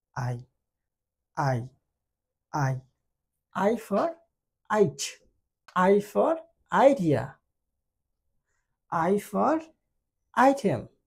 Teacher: আই এর ক্ষেত্রে দেখেন মুখটা একটু গোল হবে, মুখটা গোল হবে, যখন আমরা সাউন্ডটা ক্রিয়েট করব তখন মুখটা ধীরে ধীরে একটু বন্ধ হবে, আর জিহ্বাটা কি হবে মুখের ভিতরের দিকে চলে যাবে